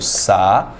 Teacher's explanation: Hiato, encontro de duas vogais em sílabas separadas. Na palavra saúde, eu tenho sa-u-de.